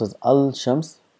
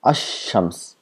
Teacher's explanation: So now if you add al to shams, so we don't pronounce as al shams, we make this lam silent and we give shadda to the word next to it, then becomes ash-shams, as though the lam does not exist.